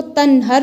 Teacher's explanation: نون ساکن پر اظہار ہو رہا ہے کیونکہ نون ساکن کے بعد ہا حروف حلقی میں سے آ رہی ہے